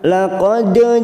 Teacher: ada huruf Dal sukun Qalqalah sugro kita pantulkan